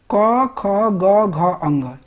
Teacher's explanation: क कंठ से आता है तो इसीलिए इसे कंठ वर्ण कहते हैं